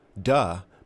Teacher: TH usually is replaced with a D sound. Duh might sometimes replace the, for example.